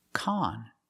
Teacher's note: We use the short ah sound like hot and stop.